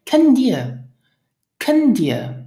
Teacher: we tend to drop the final t of the verb